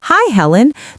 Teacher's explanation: the I in high is extended high to show she's very pleased to see her.